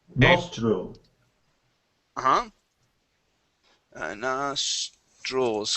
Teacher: And with the TR, okay, you want to pronounce that like a CHR.